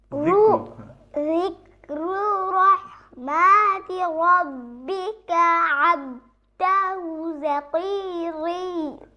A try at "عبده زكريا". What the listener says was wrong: এখানে একটু ভুল হয়েছে আব কলকলা হবে তাই না জাকারিয়া জাকারিয়া বলো আমি একবার বলি শোনো না একবার বলি যিকরু রাহমাতি রাব্বিকা আবদাহু জাকারিয়া